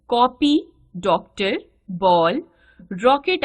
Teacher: न तो ओ ध्वनि है और न औ, बल्कि इनके बीच की ध्वनि है। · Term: आगत ध्वनि